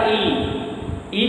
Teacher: तालु के आसपास जाकर के जीभ टच हो रही है, इसलिए इसका उच्चारण जो स्थान माना जाता है वो क्या होता है, तालु होता है।